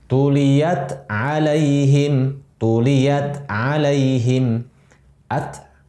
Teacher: Ta itu di lidah paling depan, ta. Sedangkan ain di tenggorokan tengah di sini. Jauh makhrajnya.